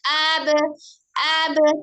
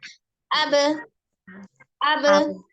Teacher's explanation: ketika kita kenal sifatnya adalah sidah, jadi tidak mengalir hurufnya, tidak abe, abe, tidak, tapi abe langsung disukunkan, abe, abe, gitu ya.